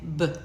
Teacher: It's made the same way as p, but now our voice is on, right? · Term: stop sound